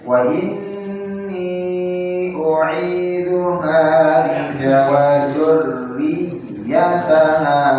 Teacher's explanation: Hati-hati di dzurriyyataha. Jangan dipanjangkan ya-nya. Pendek.